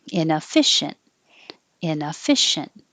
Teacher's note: we're not going to stress the e at all so you don't need the e in inefficient